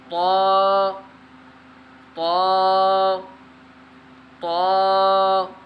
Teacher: طا کو بھی حروف مصالحہ میں سے ہے، اس کو کیا کرنا ہے، ہم نے موٹا پڑھنا ہے